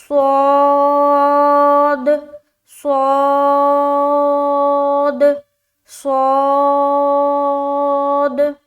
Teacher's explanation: صاد بھی موٹے حروف میں سے ہے، اسے بھی منہ گول کر کے پڑھنا ہے